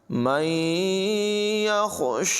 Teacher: ہا کی آواز کو حلق کے نچلے حصے سے ادا کریں گے۔ شین پر کھڑی حرکت ہے، اسے لمبا کریں گے اور ہا کو بھی الف مدہ کی وجہ سے لمبا کر کے پڑھیں گے۔